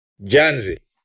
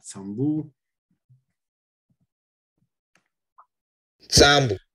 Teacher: In the penult syllable, it's way more intense and way more long than the final syllable, where the vowel is almost absent, like in many stress accent systems.